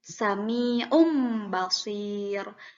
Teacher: nun mati dan tanwinnya itu diganti menjadi m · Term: iqlab